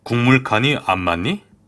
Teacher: 국물은 기역과 미음이 만나고 있을 때 뒤에 있는 비음인 미음 때문에 기역이 비음으로, 비음이 아닌 기역이 비음인 이응으로 변화하고 있습니다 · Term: 비음화